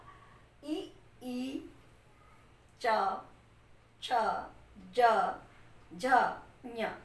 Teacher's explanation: आपकी जिह्वा आपके तालु को स्पर्श कर रही होगी